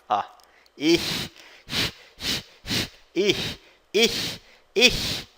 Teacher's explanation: É um chiado lá no fundo da garganta, tá? A língua travada aqui no dente, ó. · A língua ela sobe, o fundo da língua sobe meio que no céu da boca e a ponta da língua trava no dente.